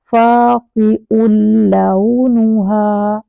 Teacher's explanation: फ़ाक़िउन, फ़ाक़िउन, फ़ाक़िउन, और फ़ाक़िउन आप देख रहे हैं कि नून साउंड आ रही है और आगे लाम है और लाम पर तशदीद है, तो फ़ाक़िउन ये नून ख़त्म हो जाएगा और ये नून नेक्स्ट लेटर लाम जिसको तशदीद है उसके अंदर इस तरह से मर्ज हो जाएगा कि अपनी साउंड ख़त्म हो जाएगा